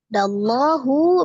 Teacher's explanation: alif lam yang melekat pada lafaz Allah karena sebelumnya berharakat fathah maka dibaca dengan tebal